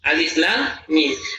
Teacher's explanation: Alifnya ini 2 harakat, lamnya 6 harakat. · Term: huruf muqatta'ah